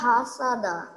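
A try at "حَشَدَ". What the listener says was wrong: ও যে টান দেয় নাই কোনো ইয়াতে, উচ্চারণ আইনুল উচ্চারণ ঠিক মতো করে নাই আর জিম আর খর উপর টান দেয় নাই।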